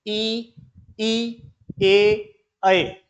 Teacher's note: सब में ओष्ठ जो है वे चपटे हो गए हैं। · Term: अवर्तुल